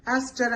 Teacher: యాస్ట్ హర్లో హ అనే consonant sound ఎగిరిపోతుంది, అక్కడ పోయి యాస్టర్ అనే వచ్చేస్తుంది